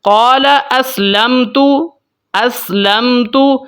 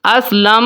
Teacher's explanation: ہم غنے کے بغیر پڑھتے ہیں، ہولڈ کیے بغیر پڑھتے ہیں، میم کی آواز کو ظاہر کر کے پڑھیں گے. اسی کو ہم بولتے ہیں اظہار شفوی.